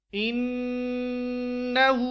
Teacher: ہا کے اوپر الٹا پیش ہے تو اس کو ایک الف کے برابر پڑھیں گے